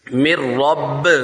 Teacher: نون کو ہجے میں پڑھیں گے، رواں میں نون نہیں پڑھا جائے گا